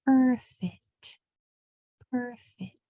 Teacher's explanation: the P, the F, and the T are all voiceless, which means there's only air that comes out. No vocal cords are used.